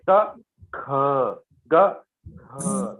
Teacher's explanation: Now one is Alpa Prana, one is Mahaprana. Kha is Mahaprana.